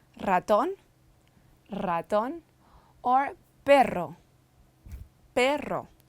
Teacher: R rolls at the start or double